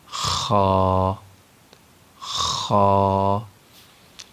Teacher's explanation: خا کا جو مخرج ہے وہ حلق کے ابتدائی حصے سے، یعنی جو حصہ حلق کا منہ کی جانب ہوتا ہے اس حصے سے خا کو ادا کریں گے. اور اس کو ادا کرنے کا طریقہ یہ ہے، خراش نکالیں گے گلے سے خا کی آواز تو پھر یہ آسانی سے ادا ہو جائے گا.